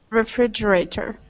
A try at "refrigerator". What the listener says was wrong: Excellent. Good.